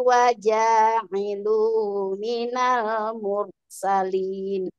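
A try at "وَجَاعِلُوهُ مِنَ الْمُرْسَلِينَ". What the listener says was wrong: Ya, nah ini hati-hati ya. Hu-nya jangan sampai hilang suaranya. Coba ulangi dari waja'iluhu minal mursalin.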